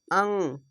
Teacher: এটি হচ্ছে ইখফাগুন্না অনস্কারের মত উচ্চারণ হবে